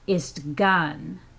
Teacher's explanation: So the da in isdagan has been dropped, the a has been dropped, leaving only the istgun, you see. So the vowel contraction is much more common in Alaskan Haida than in Masset or in Skidegate. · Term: contracted version